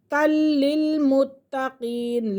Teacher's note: لام بھی مشدد ہے، تا بھی مشدد ہے، یہ دونوں اپنے پہلے والے حرف کے ساتھ مل کر پڑھے جائیں گے